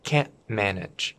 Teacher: If they can't manage, this T before the M disappears.